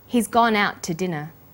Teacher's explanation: We stress he's gone out and dinner the two is unstressed